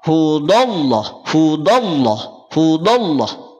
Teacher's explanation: pangkal lidah tidak naik Sehingga bunyi menjadi tipis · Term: istifal